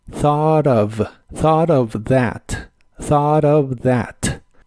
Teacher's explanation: vibrante de la v a cuando juntas las palabras thought of en especial en inglés americano se suele pronunciar la última t como r y suena más fluido